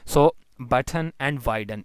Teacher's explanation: So button and widen, in these cases N becomes syllabic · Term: syllabic consonant